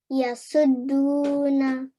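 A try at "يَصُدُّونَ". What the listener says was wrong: Perfect. Good. Well done.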